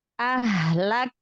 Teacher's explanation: Makhrajnya tahan di huruf kaf, baru lepaskan nafasnya. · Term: hamas